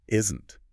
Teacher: puts the stress on the first syllable.